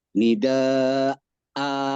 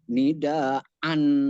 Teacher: saat waqaf, maka huruf hamzah itu dibaca 2 harokat